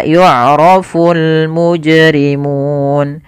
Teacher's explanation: alif lam qamariah yaitu alif lam yang dia dibaca dengan jelas suara lamnya dan dia ada tanda di atas huruf lam tanda seperti ini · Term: alif lam qamariyah